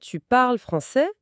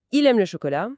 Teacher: On prend une phrase normale et hop, on fait monter la voix à la fin. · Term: L'intonation